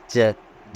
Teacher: अल्प प्राण तालव्य ध्वनि है।